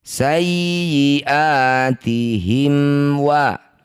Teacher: Kita perhatikan mim sukun bertemu bukan mim bukan ba disebut bacaan izhar syafawi. Baca dengan jelas mim sukunnya tidak usah dengung. Rapatkan bibir dengan sempurna.